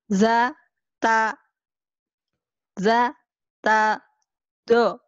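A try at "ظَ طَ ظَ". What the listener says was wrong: Za, ini yang penyakit za, nih ya.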